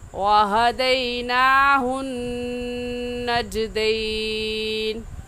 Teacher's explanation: हुन पर नून मुशद्दद है और नून मुशद्दद पर हमेशा गुन्ना होता है, इसलिए यहाँ गुन्ना करके पढ़ेंगे